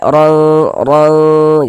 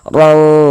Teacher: Di bagian di bagian situnya tuh kita tahan sejenak suara kita gunakan kira-kira sepanjang 2 harokat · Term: ikhfa hakiki